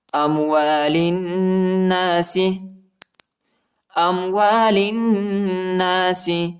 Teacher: لام کو نون کے ساتھ ملائیں گے، ٹھیک ہے، اور غنہ بھی کریں گے